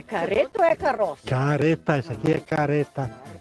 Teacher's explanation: no interior do rio grande do sul o r tem mais fraco